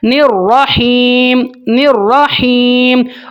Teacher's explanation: را کو موٹا اور ہا کی آواز کو آپ نے کلیئر کرنا ہے